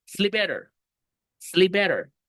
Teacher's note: Me como la P y dejo solo la better.